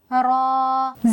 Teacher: रा जबान की नोक कमर की तरफ ऊपर के तालू से मिलकर अदा होता है